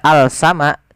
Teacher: huruf lamnya tidak dibaca Al sama tapi langsung ke Sin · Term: alif lam syamsiah